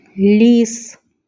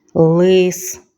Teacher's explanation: У слові ліс перший звук м'який приголосний лі. А у слові лис перший звук твердий, приголосний л.